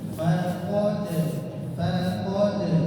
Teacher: fa tipis qofnya tebal dalnya kembali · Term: tipis dan tebal